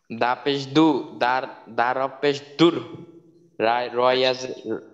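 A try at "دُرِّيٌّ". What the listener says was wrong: আচ্ছা হরফের নাম কিন্তু হরফের নাম পুরাপুরি বলবেন। এইটার নাম কিন্তু দাল, তো দালের নামটা পুরা বলবেন, আংশিক বলার দরকার নেই, পুরাটা সংক্ষেপে বলার দরকার নেই।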